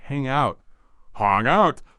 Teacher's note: That G sound at the end of hang might be a soft stop, not fully released before you move quickly to out.